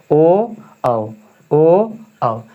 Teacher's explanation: उसके बाद एक ठो और आता है दो गो रहता है जो कि कंठोस यानी कंठ से भी और ओठ से भी। कंठ से भी और ओठ से बोला जाता है